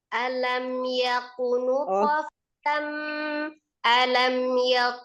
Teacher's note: alam itu mim sukun ketemu dengan yanya dia izhar